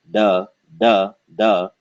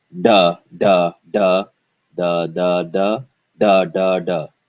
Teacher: for the english d the tongue is more forward in the mouth and it's flatter whereas for the hindi heart d sound it is curved upward